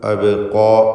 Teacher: ഖാഫിനും അലിഫിനും തഫ്ഖീമും കൊടുക്കുക